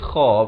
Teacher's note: kha, pula makhrajnya di hujung kerongkong ni, kha baris kasrah, wa akhihi wa la tayasu, ta baris fathah, terus naik di atas ya yang bertanda sukun.